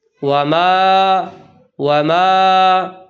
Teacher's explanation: Number 1، وما ادرا، وما، الف مدہ کے بعد نون غنہ ادا کیا جاتا ہے جو کہ غلط ہے۔ اس کو ناک میں نہیں پڑھنا بلکہ اس کی آواز کو جوف دہن میں ختم کرنی ہے